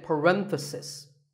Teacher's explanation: The stress is on ren.